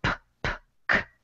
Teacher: you're not using your vocal cords to make these sounds it's just air coming through no vocal sounds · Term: unvoiced consonants